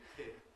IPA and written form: pʰɪn (pin)